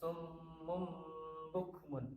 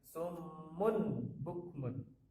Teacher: Maka dibaca summum bukmun, bukan summun bukmun. Jadi nunnya sudah hilang. Nun diganti dengan huruf mim. Nah, ini adalah iqlab.